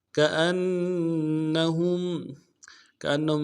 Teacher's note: ہا کو میم ساکن کے ساتھ ملانا ہے، میم ساکن میں غنہ کریں گے · کریں گے، وراء ظہورہم کأنہم، کأنہم، کأنہم میں حمزہ جو ہے، حمزہ کو نون کے ساتھ ملانا ہے، نون کے اوپر تشدید زور دیں گے